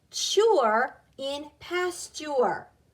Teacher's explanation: Now the T, when it's with a U-R-E, has more of a ch sound. It sounds like C-H.